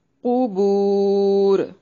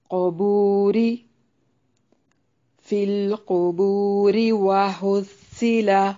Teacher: وَحُصِّلَ مَا فِي الصُّدُورِ، یہاں وقف کی صورت میں مد کر سکتے ہیں قبور اور ملانے کی صورت میں قبوری، فی القبور وحصل، یعنی ملانے کی صورت میں را کو باریک پڑھنا ہے کیونکہ را کے نیچے کسرہ ہے